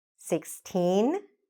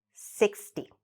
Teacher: make sure you elongate the first one and really shorten the second one